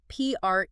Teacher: Stress on the second syllable there.